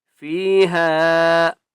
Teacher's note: ہا کو 3 الف کی مقدار کھینچ کر پڑھیں گے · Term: چھوٹی مد